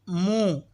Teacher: میم پیش منہ، میم دونوں ہونٹوں کے خشک حصے سے ادا ہوتا ہے